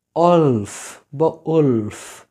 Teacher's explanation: তাই জন্য এই দুটোকে আমরা একসাথে উচ্চারণ করছি লাইক ওলফ, ওলফ। ডাব্লিউটা অ্যাবজর্ব হয়ে গেছে in the next letter vowel.